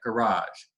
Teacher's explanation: And that je, that voiced palatoalveolar fricative, that becomes devoiced word finally in words like garage. And you can see in both ooze and garage, the vowel prior to that devoiced voiced fricative has become longer.